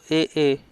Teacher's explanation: फिर आए कंठ प्लस तालु, ए